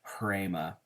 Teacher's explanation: It's a rough breathing mark, so you add a little bit of air as you're pronouncing that, and it makes a little bit of an H sound.